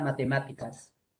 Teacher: la sílaba tónica de la palabra matemáticas es la sílaba ma